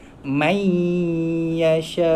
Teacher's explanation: bunyi nun tu masuk ke dalam huruf ya, daripada man jadi mai. Kemudian dengung dua harakat, mai yasha.